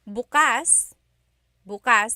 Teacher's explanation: If you say bukas, bukas, the emphasis is on the second syllable, that means open. If you say bukas, bukas, emphasis is on the first syllable, that means tomorrow.